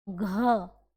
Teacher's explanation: घ निकल रहा प्राणवायु अधिक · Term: महाप्राण